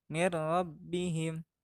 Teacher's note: nun matinya dibaca lebur karena menghadapi salah satu huruf idgham yaitu ro